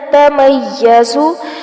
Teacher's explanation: یہاں میم کو یا کے ساتھ جوڑیں گے کیونکہ یا کے اوپر تشدید ہے، اور زا کو سختی سے پڑھا جائے گا.